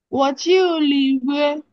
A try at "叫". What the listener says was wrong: না, এখানে চিউ না, চাও। ওয়া চাও। হ্যাঁ, চাও চাও আছে না, মুরগি চাও মানে ডাকা। চাও চাও, ওয়া চাও।